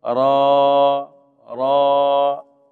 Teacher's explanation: را کھڑی حرکات کو ایک الف کے برابر کھینچیں. کھڑا زبر ہے نا.